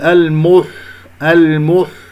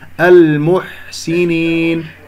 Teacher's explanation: لا نضم الشفتين في الحاء، الحاء يجري فيها الصوت والنفس رخوة ومهموسة · الميم مضمومة، الحاء ساكنة، لا تسحب ضمة الميم، لا تقول المح المح خطأ المحسنين.